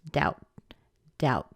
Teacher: The O is at the beginning of the next word, so we've got to connect those together. We end up pushing the D over to the ow, and we get a nice strong doubt.